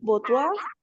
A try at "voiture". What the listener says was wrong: voiture, reemplazás la OI por ua y ¿cómo te queda?